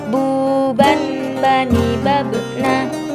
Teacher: Melafalkan huruf ba, caranya dengan merapatkan kedua bibir kita tidak jauh berbeda sebagaimana kita mengucapkan huruf B dalam huruf Latin.